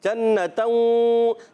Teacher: نون مشدد ایک الف کا غنہ کریں گے